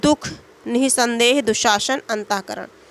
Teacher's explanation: विसर्ग वाले अक्षर पर बलाघात देखते हैं